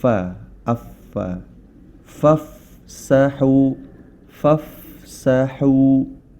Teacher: huruf Fa makhrajnya terdapat di bibir bagian dalam yang bagian bawah bibir bagian dalam yang bagian bawah bertemu dengan gigi seri bagian atas ya Fa affa fafsahu fafsahu yafsahi yafsahi ya Barakallah fikum kita